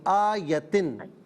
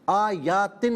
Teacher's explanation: وَلَوْ جَاءَتْهُمْ ولو جاءتهم كُلُّ آيَةٍ كل آیات دیکھیں میں آیتن پڑھ رہا ہوں، آپ آیاتن پڑھ رہی ہیں. آیتن نہیں، یا پر زبر ہے، اسے کھینچنا نہیں